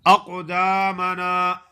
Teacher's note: قاف کو موٹا کرنا ہے اور قلقلہ بھی ادا کرنا ہے قاف پہ